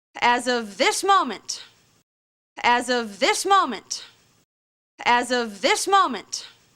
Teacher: definitely the most stressed word is the word this